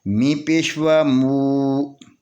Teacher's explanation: یہ واو سے پہلے پیش ہے، یہ واو مدیہ ہے، اس کو 2 حرکت کے برابر کھینچ کر پڑھیں گے۔